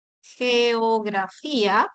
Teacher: Hay un fonema oclusivo velar sonoro